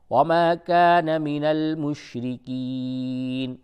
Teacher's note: بیچ زبان کا جو بیچ کا حصہ ہے اس کو اوپر بیچ تالو سے جب آپ ٹچ کرتے دونوں کو ملاتے ہیں تو شین ادا ہوتا ہے صحیح طریقے سے، بڑی شین کا وہ مخرج ہے۔